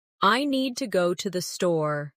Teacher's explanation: The stress is on need and store. while to and the are softer and faster.